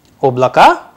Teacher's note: of this word oblaka is written and pronounced differently because again the stress is on the first vowel that is why it sounds like ob lakka instead of oblako